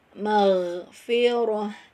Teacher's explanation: Huruf ghain makhrajnya di ujung tenggorokan · masuk ke ujung tenggorokan, pangkal lidahnya dinaikkan